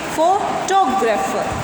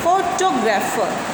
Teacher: अब इसमें जो हमारा स्ट्रेस है वो फो पर ना होकर टो पर आ जाएगा, तो हम इसको बोलेंगे फोटोग्राफर। टो को हम थोड़ा सा खींच कर बोलेंगे